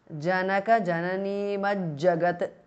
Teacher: The th in the end changes to j because of sandhi.